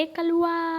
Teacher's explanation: ये जो लास्ट में जो आ वाला मतलब खींच रहे हैं ना, इसको बोलते हैं प्लुत।